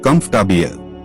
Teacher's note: Comfortable. The middle or is not clearly spoken. It sounds like comfortable.